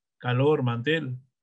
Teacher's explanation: Calor, mantel, cuyo acento prosódico recae en la última sílaba, pero no lleva tilde porque termina en consonante distinta a NOS. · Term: palabras agudas